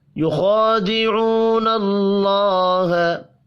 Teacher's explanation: واو مدہ کو بھی ایک الف کے برابر کھینچ کر پڑھیں گے، اللہ کا نام زبر کی وجہ سے پر پڑا جائے گا